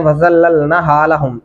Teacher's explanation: نون کو لمبا کریں گے، اس کے اوپر کھڑی زبر ہے